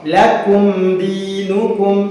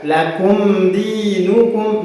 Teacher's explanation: mim sukun bertemu dengan dal. Lakum dinukum, mimnya harus dibaca dengan jelas. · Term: izhar syafawi